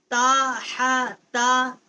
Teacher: تا کا مخرج جو ہے جب ثنایا علیا کی جڑ سے زبان کا کنارہ جو ہے وہ ٹکر کھاتا ہے تو اسے تا کا جو مخرج ہے وہ وہاں سے ادا